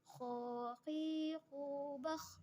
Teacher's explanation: harus tebal ya, karena dia keluar dari tenggorokan yang terdekat dari rongga mulut